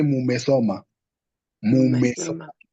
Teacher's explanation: you tend to bring a false U as a vowel to help you read the mu and the me. So you say mume soma.